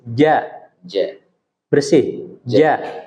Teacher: ingat huruf jim itu nggak boleh mendesis.